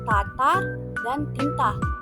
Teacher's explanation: bunyi hambat apikodental atau laminoalveolar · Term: lambang T